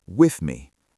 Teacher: your lips immediately close together for the m with me. You don't need to push a lot of air out for the th sound.